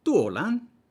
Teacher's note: So we get the D becoming an L, which is something that happens intervocalically in certain positions. But also the vowel quality change, it's now tuo, not to.